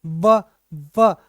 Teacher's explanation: व मतलब नीचे वाला होठ और ऊपर वाला दांत टच होते हैं। व बिना दोनों टच हुए व नहीं बोल सकते। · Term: दंत्योष्ठ व्यंजन